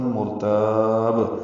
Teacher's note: را پر ہے، تا باریک ہے، لیکن تا کو لمبا کریں گے اور با ساکن پہ قلقلہ کریں گے